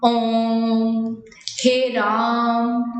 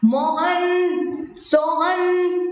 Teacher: जिन स्वरों का उच्चारण करते समय ह्रस्व से लगभग 3 गुना समय लगे, यानी दीर्घ से भी ज्यादा समय जिसमें लगे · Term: प्लुत स्वर